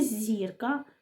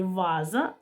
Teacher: в слові зірка звук зь м'який а у слові ваза звук з твердий